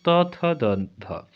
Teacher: दंत से त वर्ग को बोला जाता है